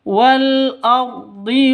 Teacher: Wal ardi ro-nya ro tafkhim tebal, seperti itu